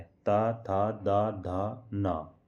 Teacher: जिनके उच्चारण में जीभ का अगला भाग ऊपर के दांतों को स्पर्श करता है उन्हें दंतीय व्यंजन कहते हैं।